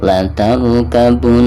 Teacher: La tarkabunna, hukum gunah ya, karena nun yang bertasydid itu merupakan salah satu daripada huruf gunah. Jadi tidak hanya ditekankan saja, melainkan harus ada gunahnya.